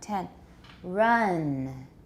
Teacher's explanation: make the vowel longer the final nasal is not very long